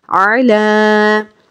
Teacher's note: عین زبر آ، لام کھڑا زبر لا، علا، عین پہ حرکات ہے، معروف پڑھیں گے، لام پہ کھڑا زبر ہے، ایک الف کی مقدار کے برابر کھینچ کے پڑھیں گے۔